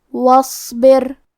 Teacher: آخری میں حرف الراء کا حکم ہے ترقیق کیونکہ اس پہ جزم ہے، لیکن اس کے پہلے والے حرف کے نیچے با کے نیچے زیر ہے تو ہمیں راء کو پتلی آواز میں پڑھنا ہے